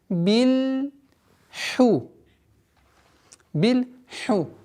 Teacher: обращаем внимание, чтобы правило калькаля не применять, так как у ляма нет такого свойства взрывность.